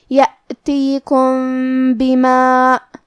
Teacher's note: کلمت بما با حروف الاخفاء الشفوی میں سے ہے، لہذا ہمیں میم ساکن کو چھپاتے ہوئے اور غنہ کے ساتھ یہ حکم کو ادا کرنا ہے